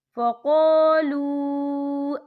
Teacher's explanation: ساکن سے پہلے پیش ہے اور اس پہ چھوٹی سی مد بھی ہے، تو ہم یہاں 3 یا 4 حرکت کے برابر کھینچ کے پڑھیں گے. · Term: واو مدہ